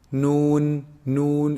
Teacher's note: noon is actually pronounced from the tip of a tongue